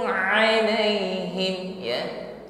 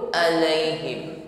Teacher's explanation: ucapkan ain dengan tawassut, dengan lunak.